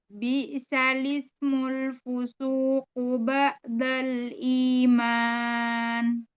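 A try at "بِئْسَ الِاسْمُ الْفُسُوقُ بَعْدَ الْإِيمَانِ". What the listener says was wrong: Nah, di huruf ainnya ini di sini baru kelihatan banget. Ainnya belum dapat. Masih di hamzah, bukan ba'dal tapi ba. Ada sifat bainiyahnya. Jadi sini ain kan punya bainiyah. Artinya dia masih ada suara yang mengalir.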